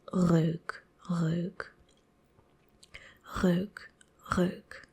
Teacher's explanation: we pronounce the R at the start of a word with the back of our throat.